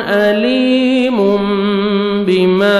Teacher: तनवीन के बाद बा आ रहा है तो तनवीन के नून को मीम में चेंज करेंगे, जिसको बोलते हैं इक़लाब, तो नोज़ में साउंड लेके जाएंगे, इख्फा करेंगे।